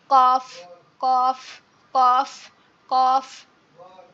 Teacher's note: জিহ্বার গোড়া, আমাদের যে সবাই আমরা চিনি, আমাদের গালের মধ্যে একটা জিভ আছে যেটা খুবই নরম একটা অংশ, এই জিহ্বার গোড়া তার বরাবর উপরের তালুর সঙ্গে লাগে।